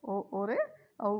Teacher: और ओ औ किससे बोला जाएगा, कंठ ओष्ठ से। ओ और औ कंठ ओष्ठ, कंठ से और होठों से